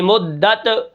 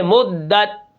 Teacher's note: آخر میں جو تا ہے اس کو قلقلہ بالکل نہیں کرنا، یعنی مدت، آخر میں آواز بالکل نہیں نکالنی، ٹھیک ہے، مدت، آواز ختم ہو جائے، ٹھیک ہے۔